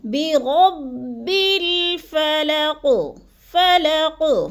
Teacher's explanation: قاف کو ساکن کر کے پڑھنا ہے، آخر والے قاف کو، اور تھوڑا سا ہلانا ہے، قلقلہ کرنا ہے